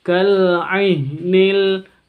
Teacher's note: Kal ainil, jadi jangan sampai keluar dari hidung. Ain itu bukan dari hidung, tapi dari tenggorokan tengah.